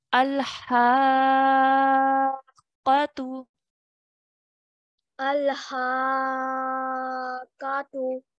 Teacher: we really make an effort to join the qaf with force